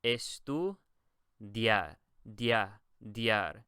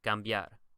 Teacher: This D-I-A-R is almost like one sound.